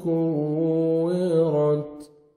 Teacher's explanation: کاف کو باریک پڑھنا ہے اور واو مشدد ہے، سختی سے ادا کریں گے۔ کوے، کوے نہیں پڑھیں گے، وداؤٹ شد کوے ہوئے گا، اور شد ہے تو کوے ملائیں گے۔